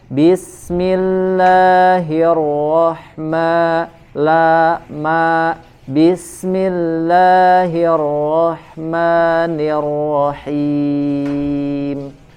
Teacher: Mad tabi'inya masih kepanjangan, 2 harokat.